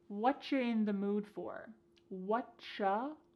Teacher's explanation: Here the word you has been reduced to cha. Cha. This is extremely common in spoken English that the word you gets changed up in a lot of ways.